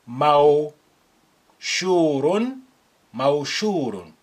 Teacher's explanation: pronounce the waw with sukun as an ow sound